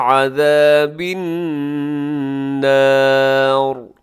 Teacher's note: آخر میں را موٹی پڑی جائے گی کیونکہ را سے پہلے جو حرف ہے اس کے اوپر حرکت ہے.